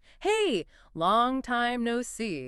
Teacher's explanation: Notice how long time no see almost becomes one single melodic chunk.